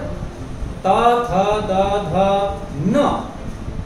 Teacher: इनको बोलने में दांतों की आवश्यकता पड़ती है, जीभ दांतों पे जाके के लगती है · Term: तवर्ग